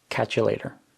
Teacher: So catch and you are combined into one word, catcha. And then the t in later is pronounced as a d.